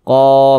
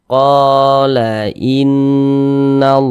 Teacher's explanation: Mad thobii panjangnya dua harakat